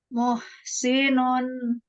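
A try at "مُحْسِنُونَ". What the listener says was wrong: Muh. Jadi ketika kita mengucapkan huruf H, jangan dibuang. Jangan muah, muah. Ini berubah bunyinya. Jaga. Muh, muh. Jangan muah terlalu besar, jadi bunyinya ada gitu. Jadi beda. Harus dijaga. Muh. Jangan terlalu lebar.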